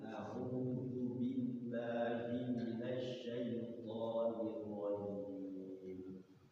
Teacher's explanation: Yang pertama zalnya ujung lidah ya. Auzu jangan auzu.